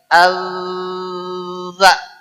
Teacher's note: zal adalah ujung lidah dengan ujung gigi seri atas bergetar